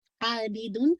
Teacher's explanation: आबिदुन, देखिए आ को आपने 2 काउंट पढ़ा, आबिदुन, ठीक है। बी बाकी कसरा शार्प रखिएगा, तनवीन के बाद मीम है तो इदगाम कामिल मुकम्मल आवाज मीम के अंदर मर्ज हो जाएगी, आबिदुन।